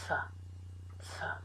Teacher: this is unvoiced and so there shouldn't be any vibration